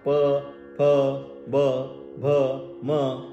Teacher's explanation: बाकी काही कुठेही टेकत नाही जीवा फक्त ओठ्या चालतात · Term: ओष्ठ